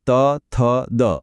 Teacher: જ્યારે જીભ દાંતની પાછળ અડકે ત્યારે દંત્ય અક્ષરો બને છે.